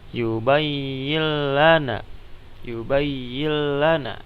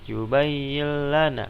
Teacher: ketika nun mati bertemu dengan huruf lam membacanya tidak didengungkan